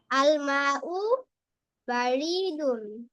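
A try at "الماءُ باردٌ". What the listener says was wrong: নো, রতে টান হবে না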